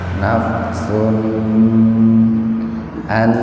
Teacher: Nun mati ketemu dengan nun, jadi membacanya itu diidghamkan. Nun yang pertama dimasukkan ke nun yang kedua dengan mendengung. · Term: idgham biguna